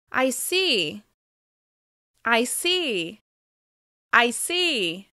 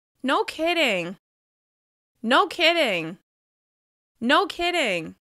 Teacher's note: the slight rise on these short responses shows that you understand how the other person feels